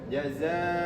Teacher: tanwin bertemu dengan mim digunah maka ditahan.